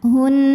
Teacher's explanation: Apabila kita berhenti di sini, nunnya tetap dihukumi gunnah musyaddadah karena nun bertasydid, maka tasydidnya dengungnya tidak hilang, tetap dibaca ditahan. Hun.